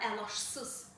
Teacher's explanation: ç c ilə yox, ş ilə əvəz olunacaq